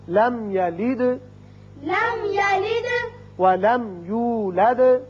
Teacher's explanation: یہاں میم ساکن ہے، اظہار شفوی ہوگا. دال ساکن ہے، صفت قلقلہ